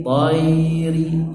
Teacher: Ya-nya dibaca jelas, tayri. Ri-nya pendek.